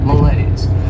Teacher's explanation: has 2 syllables and the stress is on that second syllable.